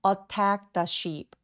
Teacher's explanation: 근데 빠르게 발음하면 attacked의 트 소리가 th와 만나서 혀의 위치가 매우 가깝기 때문에 한 번만 발음합니다. 그래서 마치 이 t가 느껴지지 않는 느낌으로 attack the sheep, 마치 동사 원형처럼 느껴지게 하는 거죠.